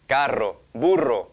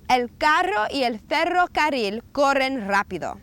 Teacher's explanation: Er is a trilled R. Try not to spit on anyone when you do that.